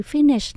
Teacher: chúng ta nhớ mình nhấn âm đầu tiên mình đọc là phí mình lên cao nhé Phí âm số 2 mình xuống thấp giọng lại